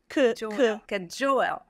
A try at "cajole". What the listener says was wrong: Glide those vowels a little more.